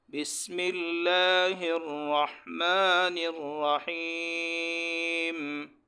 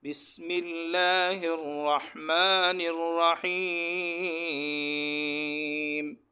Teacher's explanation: سین سیٹی والے حروف میں سے ہے، ان کو سختی کے ساتھ سیٹی کی آواز نکال کر پڑھے